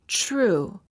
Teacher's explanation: When the T is followed by an R sound, the T changes and becomes an almost ch sound.